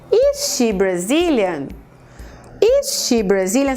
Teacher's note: Você tá vendo que a entonação, inclusive, também sobe, a gente chama isso de rising intonation, mas houve essa mudança realmente do is pra frente do she.